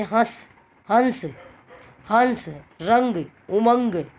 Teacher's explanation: अनुस्वार एक नासिक्य व्यंजन है, जो जिसको बोलते समय खाली नाक में से आवाज़ आए तो वहाँ पर अनुस्वार का प्रयोग होता है।